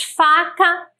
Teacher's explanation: Então, por exemplo, quando eu levo em consideração as palavras faca e vaca, nós vamos perceber que em faca, o fonema inicial é um fonema surdo. Nós vamos perceber de maneira mais simples se nós colocarmos a mão logo aqui abaixo e pronunciarmos só o fonema sem a vogal.